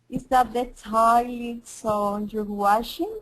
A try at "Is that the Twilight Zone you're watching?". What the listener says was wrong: Now I want you to be careful here. Jur. It's not jur. It's jur. You're watching? And also, actually it was similar to Alex. Be careful with the CH. More of a CH. Watching. Watching. Is that the Twilight Zone you're watching?